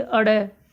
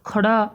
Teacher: खड़ी बोली का बिल्कुल कर्कश रूप होता है ना, जैसे अड़े, जैसे खड़ा, ऐसे इस तरह से जो बोले जाते हैं ना, ये दोनों उत्क्षिप्त व्यंजन हैं